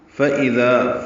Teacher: فَإِذَا فا جلدی ادا کریں گے، لمبا نہیں کریں گے، حمزہ کو اقصی حلق سے ادا کریں گے. حمزہ میں صفت جہر ہے، بلند آواز سے ادا ہوتا ہے. ذال نرمی سے ادا ہوتا ہے.